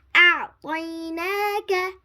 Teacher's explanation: Ta is pronounced from the tip of the tongue touching the root of the upper front teeth